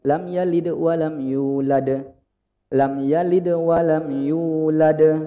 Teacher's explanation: Jadi pantulannya agak beda. Kalau yalid agak kecil.